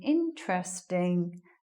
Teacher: Again, the stress is at the beginning of the word.